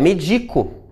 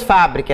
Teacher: quando elas atuam como verbo, há um deslocamento da sílaba tônica aqui. Não é mais médico, é medico.